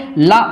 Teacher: ला उच्चारित होता है दंत से